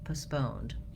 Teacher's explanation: they reduce that vowel in the first syllable